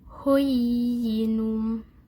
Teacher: Kemudian yang keempat ada mad tamkin. Panjangnya 2 harokat juga.